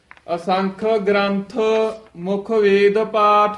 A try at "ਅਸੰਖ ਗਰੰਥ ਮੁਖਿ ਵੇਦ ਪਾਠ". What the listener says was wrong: ਗ੍ਰੰਥ ਕਈ ਬੋਲ ਜਾਂਦੇ ਨੇ ਹੇਠਾਂ ਰਾਰਾ ਲਾ ਕੇ, ਗ੍ਰੰਥ ਹੀ ਬੋਲਣਾ ਹੈ, ਰਾਰਾ ਪੂਰਾ ਹੈ। ਗ੍ਰੰਥ ਨਹੀਂ ਕਹਿਣਾ, ਗ੍ਰੰਥ।